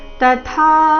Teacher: ಥ ಇಲ್ಲಿ ಮಹಾಪ್ರಾಣ ದೀರ್ಘ